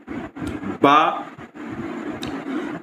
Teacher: बा तमास बिल मखरज है। दोनों होठों के तर हिस्से से अदा होता है। सिफ़त के ऐतबार से बा कवी हरक है।